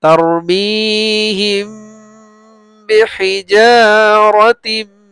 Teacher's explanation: মিম সাকিনের পরে বা আসলে গুণনা হয়